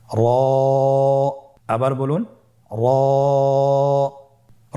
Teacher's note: জিহ্বার আগার উল্টা পিঠ তার বরাবর উপরে তালের সঙ্গে লাগিয়ে উচ্চারিত হয়।